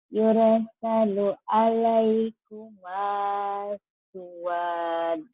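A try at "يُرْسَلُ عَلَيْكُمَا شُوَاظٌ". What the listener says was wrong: Suwaz gitu ya. Ada zo-nya. Yursalu alaikuma syuwaz. Syuwaz gitu. Ada zo, ada bersisa itu zo-nya. Syuwaz. Iya, syuwaz.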